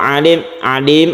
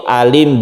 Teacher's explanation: Alim bukan pakai Ain tapi pakai Hamzah a pakai a ya demikian juga sukun Hamzah di sini tidak